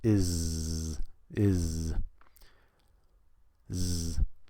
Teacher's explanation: z sound in is because that's an S but it's pronounced as a z